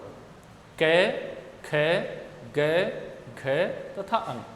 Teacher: ये सारे वर्ण कंठ से उच्चारित होते हैं, इसलिए इनको कंठ्य वर्ण कहा जाता है।